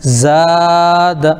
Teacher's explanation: زا الف زبر زا، دال زبر دا، زاد۔ الف سے پہلے زبر ہے تو الف مدہ ہو گیا، اس لیے اس کو کھینچیں گے، لیکن دال کے اوپر صرف زبر ہے، اس لیے اس کو جلدی پڑھیں گے۔ تو زاد، اب ہم لوگ غلطی میں پڑھتے ہیں زادہ، یہ غلط ہو جاتا ہے۔